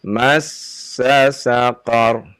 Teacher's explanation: Jangan dipanjangkan sa-nya ya Pak ya, pendek saja.